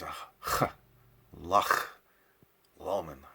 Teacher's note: We have that in English, just in that word lach. So it's the back of your throat. It's almost like you're coughing up some phlegm. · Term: broad CH